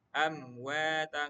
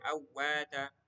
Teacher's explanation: Jadi tetap dibaca dengan jelas mim sukunnya. Amwata enggak boleh awwata hisabuhum wahum wahum farihun.